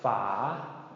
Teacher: And the second part, fa. Okay, the word fa, long rising tone as well. So 2 long rising tones with F sounds, fa, is a lid or a cap, like for a milk jug or just various kinds of lids or caps.